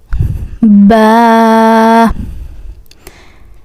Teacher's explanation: without jerking alif and the second letter it's called ba and this B we originate from the moist part of the lips B and also we stretch this letter for 2 seconds like